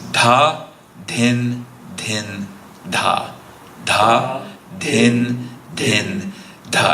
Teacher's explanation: And if you hear a little breathiness, there's that aspirant syllable that we have from Sanskrit-based languages.